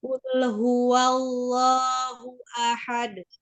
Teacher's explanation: Lam sukun ya, itu sifatnya lunak ya, mengalir, tidak dipantulkan. Tidak dipantulkan kul gitu ya, karena sifatnya sendiri dia tengah-tengah, tidak sidah, tidak rogoh.